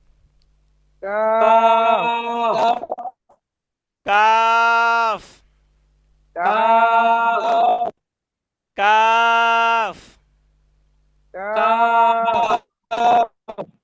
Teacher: জিহ্বার গোড়া হইতে একটু আগে বাড়িয়া তার বরাবর উপরের তালুর সঙ্গে লাগাইয়া উচ্চারিত হয় কাফ